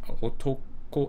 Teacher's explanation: it should drop after the ko